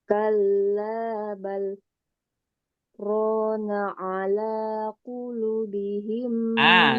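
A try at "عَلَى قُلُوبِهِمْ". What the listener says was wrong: Lu. Lu-nya panjang lu-nya. Nu-nya panjang juga.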